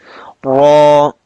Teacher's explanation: Ra is a bold letter. We will read it with a full mouth.